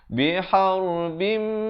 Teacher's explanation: tanwin bertemu mim, idgham bi gunnah, masuk beserta dengan dua harakat.